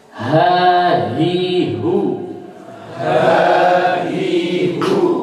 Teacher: Jadi ha itu keluarnya di tenggorokan, ya, bukan di dada.